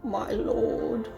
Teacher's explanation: Oh my god, I can't with the vocal fry.